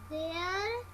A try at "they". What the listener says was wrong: बेटा बुक में देखो, देयर नहीं है, THEY, क्या बना?